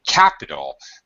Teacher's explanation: the first syllable is stressed so you have three syllables capital the last syllable a lol ul Li L doesn't really